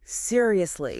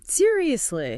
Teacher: >> Notice what happens physically on that second one. The pitch goes down, the vowel sounds stretch out, and it's accompanied by this slow exhale. · The downward pitch completely kills the surprise and replaces it with exhaustion or rejection. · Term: Downward tone